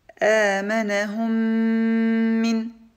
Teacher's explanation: nous avons prononcé une seule lettre mim ayant une shadda et accompagnée d'un nasillement